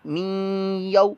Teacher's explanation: या वाव ज़बर यौ, ये वाउलीन है, वाव साकिन से पहले देखें ज़बर आ रही है, लिहाजा वाउलीन है, इसको लंबा नहीं करना